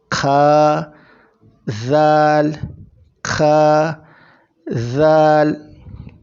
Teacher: ذا میں زبان آگے کے دو دانتوں میں لگے گی